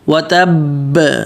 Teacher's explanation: پھر آگے با پر تشدید بھی اور قلقلہ بھی کریں گے، یہ قلقلہ بالکل واضح ہوگا کیوں، اور اعلیٰ سطح پر قلقلہ کریں گے